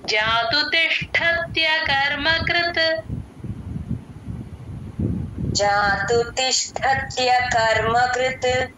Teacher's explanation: కృత్ చాలా తేల్చి చెప్పాలి అస్సలు స్ట్రెస్ ఇవ్వకూడదు